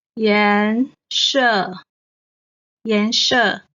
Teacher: 颜 is the second tone. 色 the fourth tone.